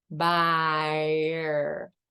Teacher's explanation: Now, once again, that's not the best R for establishment because you open your mouth with the ah, buyer. And that means that makes the R more challenging to produce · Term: vocalic R